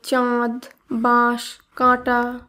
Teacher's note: চন্দ্রবিন্দুর উচ্চারণ রাড়ি উপভাষায় স্পষ্ট